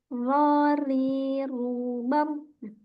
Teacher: pada huruf roah huruf ro ini spesial Dia mempunyai sifat takrir takrir ini bergetarnya ujung lidah dan Ro Jadi ro ada getarannya ya ro ri r Tapi · untuk getaran di huruf ro ini kita tidak terlalu banyak, cukup satu getaran saja.